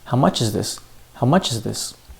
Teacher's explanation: Well, much-is is linking – there are no more reductions